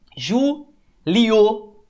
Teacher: Ó como é que o O é mais forte. Então, é um ditongo crescente. Iniciou. Ó o O mais forte, ditongo crescente.